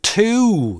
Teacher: В слове two двойной гласный, по длине как два коротких. И у него нет краткой формы.